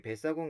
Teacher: 배라는 단어하고 사공이라는 단어가 결합됐습니다. 그러면서 사공의 첫 음절, 이 초성인 시옷이 된소리인 쌍시옷으로 바뀌었습니다. 이것은 첨가가 아닙니다.